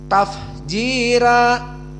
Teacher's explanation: Dan fa as-sakinah huna yufidul hams. Di sini harus dibaca dengan hams.